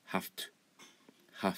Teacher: 声帯を震わせるのを取ってしまって、空気を出す音だけに変える、無声音化する っていうのが、一応音声学的な、話です。で、これが結構起きるんですね。っていうのは、前回も言ったTone▁of▁Voiceの、これは▁V▁だからいいんですかね。あとどこだろうな、めちゃめちゃ · Have で止めることによって V の音が F に変わって